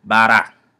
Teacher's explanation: It is also worth mentioning that the English R is quite different from the Dioula R. The Dioula R, which is a flap, is almost similar to the Spanish R, and you can notice it in a word like bara.